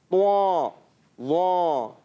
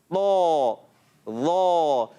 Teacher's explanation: طوا وا یہ پڑھتے ہیں، ناک میں آواز لے جاتے ہیں تو غلط پڑھتے ہیں. تو ہم نے پڑھنا ہے طا بغیر ہونٹ گول کیے، اور موٹا بھی کرنا ہے، ایکسٹرا موٹا